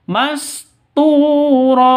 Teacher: cara bacanya panjang dua ketukan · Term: Mad Iwat